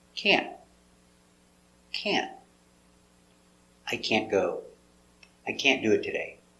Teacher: We don't pronounce the T hard. Make a stop T. Can't. So just put your tongue up and stop.